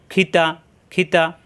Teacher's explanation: তা জবর তা মাকসার ঠিক খি কন্ঠনালী শেষ অংশ থেকে খি তা জবর তা জিহ্বার আগা উপরে দাঁতের গোড়ায়